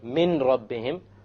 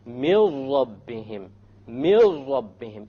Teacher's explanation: So you don't say min rabbihim, you drop it. You drop the noon and you merge the mim with the ra. And you say, mil rabbihim, mil rabbihim, immediately. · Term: idgham without ghunnah